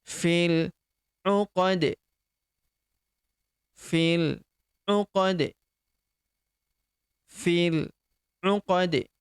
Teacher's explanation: Kemudian huruf di di ujung karena dia adalah termasuk huruf-huruf pantul atau huruf-huruf qalqalah. Maka ketika dia sukun di sini karena kita sukunkan huruf ujungnya maka dia dipantulkan atau diqalqalahkan.